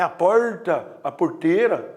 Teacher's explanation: Você vai um pouco mais para o interior, tem um R que chama R retroflexo